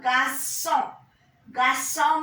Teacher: ON is nasal vowel.